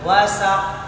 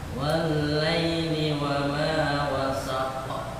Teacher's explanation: Cepat, jangan ditekan karena nggak ada tasydid.